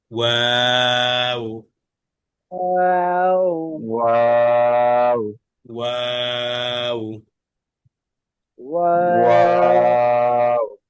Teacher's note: দুই ঠোঁট গোল করে মাঝখানে সামান্য ফাঁকা রেখে তিন আলিফ টেনে